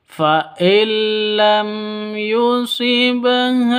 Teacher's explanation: Di sini ada nun mati bertemu dengan lam. Jadi cara bacanya itu masuk ke lam tanpa dengung. Kenapa? Karena ini bacaan idgham bila gunnah.